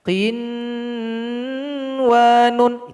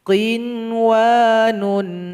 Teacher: juga tidak boleh didengungkan salah kalau dibaca Rin wanun Itu salah yang betul itu dia cukup izhar kan tanpa didengungkan